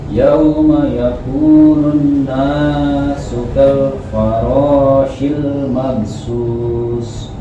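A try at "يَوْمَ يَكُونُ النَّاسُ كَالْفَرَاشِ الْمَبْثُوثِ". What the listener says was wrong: Bagus. Kurang sedikit gunnahnya sama qalqalahnya. Nunnya ditahan dulu sebentar.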